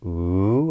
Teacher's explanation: So a rising intonation pattern would be ooh, and we typically use it for questions or for lists.